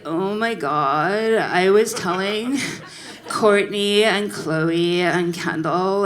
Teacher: and the Kardashians have a very specific way of talking so starting with the Kardashians there's a vocal fry